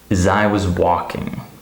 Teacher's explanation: The word as is reduced to is.